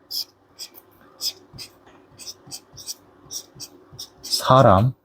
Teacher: The next one is 시옷. It sounds similar to English S, but it's a little weaker. So S is a strong sound, and 시옷 is a little bit weaker sound.